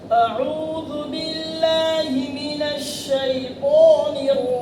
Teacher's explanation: आ उू उसके बाद ऐन के अंदर ऐन पे पेश है। वाव मद्दा है। तो उ के अंदर होठ गोल होना चाहिए।